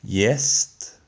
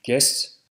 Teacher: In Norwegian, G is silent before J, so it's simply y. while in Danish it's g.